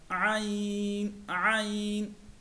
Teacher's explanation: عین جو ہے وہ حلق کے درمیانی حصے سے ادا ہوتا ہے، عین عین۔ اگلا مخرج ہے غائن کا۔